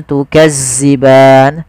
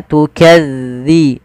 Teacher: tipis dalalnya tidak ada desis